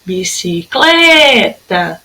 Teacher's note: Ó, sílaba tônica é o clé. Se é a penúltima, então ela é paroxítona, tá?